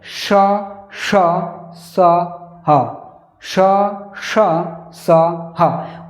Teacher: जो मुख होता है वो हल्का सा खुला रहता है और हवा घर्षण खाकर निकलती है, ऊष्म हवा निकलती, गर्म हवा से मुंह से ये निकलती हैं। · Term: ऊष्म व्यंजन, ऊष्म व्यंजनों